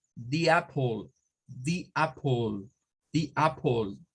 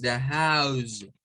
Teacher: puede sonar con una I, es decir, como di, o puede sonar con un schwa, como da